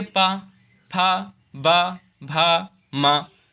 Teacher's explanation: ओष्ठ व्यंजन इसे कहते हैं क्योंकि ये होठों से बोला जाता है। इसमें जीभ कोई कार्य नहीं करती है।